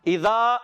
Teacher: اس کا بہت زیادہ خیال رکھنے کا ہوتا ہے کہ اکثر دیکھا گیا ذال جو ہے زا سے بدل جاتا ہے اور زا جو ہے وہ ذال سے بدل جاتا ہے، تو اس کو ہم نے بہت احتیاط سے پڑھنا ہے۔ اذا میں ذال کو کلیئر ادا کریں گے، عرف مدہ ہے، 1 الف کھینچ کر ادا کریں گے۔ · اذا، حمزہ کو واضح کریں گے، ذال الف زبر ذا، ذال کو زا سے نہیں بدلیں گے پیارے بچوں